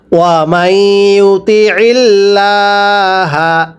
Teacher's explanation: আমার সাথে পড়বেন, ওয়া মাই, মিম লাগবে, ইয়ায়ের সাথে ঈদগাম করে পড়তে হবে। আর ঈদগাম হলে সেখানে এক আলিফ সমপরিমাণ টানতে হবে।